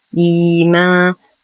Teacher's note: لدينا يا ساكنة وقبلها همز مكسور فهو مد بدل يمد بمقدار حركتين